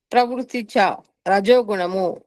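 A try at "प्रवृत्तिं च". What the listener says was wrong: ప్రవృత్తి సున్నా పెట్టుకోండి.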